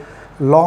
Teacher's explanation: জিহ্বার দুপাশ দিয়ে বাতাস বের হয় বলে ল কে বলা হয় পার্শ্ববিক ধ্বনি